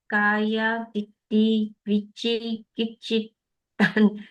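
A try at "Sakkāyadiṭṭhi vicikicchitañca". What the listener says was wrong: Okay, correct. You're right. Vicikicci.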